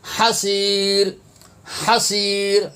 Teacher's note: بصر، بصر، خاسئا وهو، خاسئا وهو، ہا پیش ہو، حسیر، حسیر، ہا زبر ہا، حلق سے ادا ہوگا